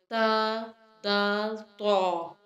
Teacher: ता, दाल, तौ अदा करते हुए हमारी ज़ुबान की नोक सामने के दोनों दांतों की जड़ों के साथ लगेगी।